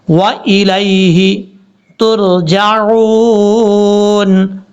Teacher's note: لام کو یا سے ملائیں گے اور یا کو لمبا نہیں کریں گے، کیونکہ یہ یا لین ہے یا مدہ نہیں ہے.